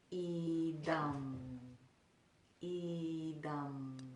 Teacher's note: That's called the Anusvara. And the Anusvaras are pronounced with the tongue floating all the way to the roof of the mouth and just kind of hugging the roof of the mouth.